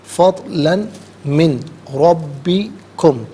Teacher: فضلاً میں لام پر دو زبر کی تنوین سے من کی میم کے ساتھ ملائیں گے، اور من میں نون ساکن کو ربی کے را کے ساتھ ملائیں گے، اور ناظرین دونوں مقامات میں یہاں پر یرملون کا جو قاعدہ ہے وہ اپلائی ہو رہا ہے۔ · ہر کلمے کو علیحدہ پھر ملا کر پڑھتے ہیں، بغور ملاحظہ فرمائیں۔ لتبتغوا میں با ساکن ہے، لیکن یہاں با حرف کلکلا ہے تو سکون کے وقت آواز لوٹتی بھی محسوس ہونی چاہیے